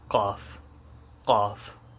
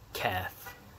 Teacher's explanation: The qaf is more like sharp in the back of the throat. And kaf is just like a baby cow or something.